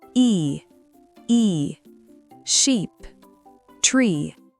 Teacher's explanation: Pour le premier son I ou I en IPA classique, étirez vos lèvres pour faire un très grand sourire. C'est un son long. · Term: I long